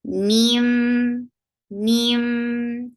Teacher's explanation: the idgham is with gunna. You are keeping the sound in your nose too. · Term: idgham with gunna